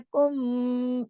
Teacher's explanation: मीम साकिन के बाद मीम मुशद्दद आ गया, कुम, यहाँ भी लंबा गुन्ना हो गया अकमल।